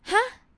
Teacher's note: in thai we we say huh with high tone okay huh short sound but high tone